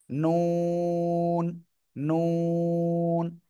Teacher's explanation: জিহ্বার আগা তার বরাবর উপরে তালুর সাথে লাগিয়ে